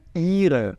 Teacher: Demora um pouquinho nesse i